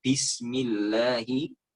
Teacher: kalau baca ba itu mendok, ya, itu akan terasa ada angin. Akan terasa ada angin keluar dari mulut kita, sementara tadi dari 6 sifat ba, nah, itu sifat jahar, sifat yang tidak keluar angin.